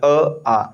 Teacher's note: कंठ मतलब गले के हल्का सा ऊपर वाइब्रेशन होगा ना, आ, है ना, कंठ के ऊपर वाइब्रेशन है, ठीक है।